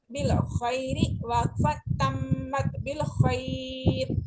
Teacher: وقفن میں تشدید بھی باقی رہتی ہے یعنی ہم اس کو غنہ جاری رکھیں گے